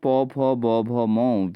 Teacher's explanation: तो प फ ब भ म जो व्यंजन होते हैं दोस्तों वो होते हैं ओष्ठ व्यंजन के तौर पे जाने जाते हैं